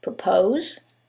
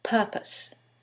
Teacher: in the first one, it's the second syllable that's stressed, and in the second one, it's the first syllable, and that changes the pronunciation completely.